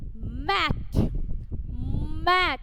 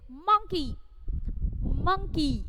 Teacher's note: whenever you are pronouncing M, both of your lips are joining together.